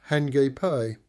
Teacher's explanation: Hakip pronounced hiipe. Stress on second syllable